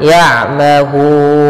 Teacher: Cara membacanya yaitu kita panjangkan hu-nya, boleh 2 harokat, boleh 4 harokat, dan boleh pula 6 harokat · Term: mad arid bisukun